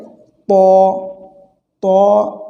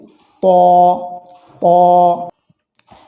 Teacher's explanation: আওয়াজ হলে যেমন একটু বেজে ওঠে কিছুটা এরকম আওয়াজ হবে ত জিহ্বার আগা সামনের উপরে দুই দাঁতের গোড়ার সঙ্গে লাগিয়ে · এটি উচ্চারণের সময় একটু মুখ ভর্তি আওয়াজ হবে একটু বেজের মত আর কি বা ফাঁকা ঘরে আওয়াজ হলে যেমন একটু বেজে ওঠে কিছুটা এরকম